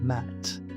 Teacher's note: lips closed air through nose